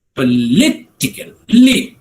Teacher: the second syllable gets the emphasis